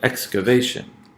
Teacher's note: That X, that's a secondary stress.